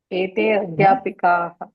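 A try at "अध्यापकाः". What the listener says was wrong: పి కాదు. ఇది పి లేదు, పా ఉంది.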